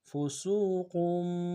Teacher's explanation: تنوین کو آگے میم کے سامنے لائیں گے جو چھوٹا میم ہے، فسوقم، میم میں غنہ کریں گے